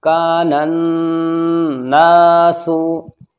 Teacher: और इसके शुरू में अलिफ और लाम है, दोनों नहीं पढ़े जाएंगे, ये नून इस नून में मिल जाएगा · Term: हुरूफ़ शम्सी